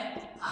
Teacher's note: काकल्य व्यंजन जो होता है ह को बोलते हैं।